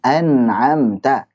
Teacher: Sifatnya nun kan tawasud, ngalir sedikit.